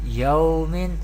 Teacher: Here is zabar before waw sakin, this is waw leen, and this is do zir tanween. We pronounce waw leen without stretching or without sudden pause.